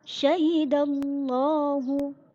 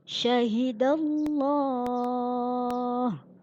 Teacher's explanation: Sebelum lafzul jalalah ada harokat fathah. Bacanya dengan tebal, tafkhim.